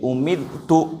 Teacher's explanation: رائے ساکنہ سے پہلے زیر ہے لہذا اس رائے ساکنہ کو باریک پڑھیں گے، پتلا کر کے پڑھیں گے